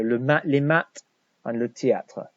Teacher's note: Remember the TH sound is a T sound, not a th.